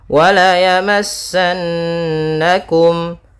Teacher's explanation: ada nun bertasydid, bacaan gunnah, ditahan dulu suara n-nya.